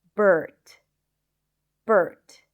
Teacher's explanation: the stir sound that in American English, it is always associated with the R sound